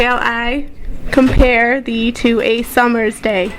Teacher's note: pentameter meaning that it has 10 syllables with alternating stressed and unstressed sounds